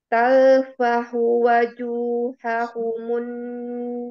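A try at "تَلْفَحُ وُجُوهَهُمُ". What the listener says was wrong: Afwan Umi tadi ditalfah wu bukan wa tapi wu wuju kemudian di apa mulut kita monyong tempura monyong mencucu wuju wujuhahumun nar wa hum fiha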